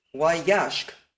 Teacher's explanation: yashk is the same as yashke, except the emphasis is now on the first a and the last drops